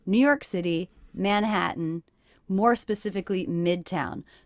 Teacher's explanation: my voice is going up at the end of each of these little phrases to signal that there is more information yet to come